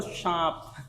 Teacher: सांप बोलते हैं ना, तो दांतों से निकलती है ना, इसलिए इसको दंती सा बोलते हैं